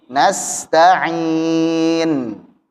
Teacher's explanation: huruf nunnya dibaca tipis, huruf sin juga demikian. Tipis juga.